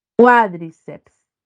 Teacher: Cuá, ahí está la sílaba tónica en cuá. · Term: esdrújula